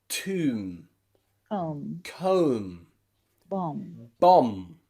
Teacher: we don't say tomb we don't say bomb okay we we after the m sound at the end you can see that that b is silent · when the B sound comes after a consonant, especially a strong consonant like M, it is normally always silent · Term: silent letter, silent B